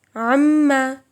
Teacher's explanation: مشدد، اس میں غنہ ضروری ہے